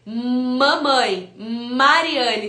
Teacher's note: o M é produzido pelo contato dos dois lábios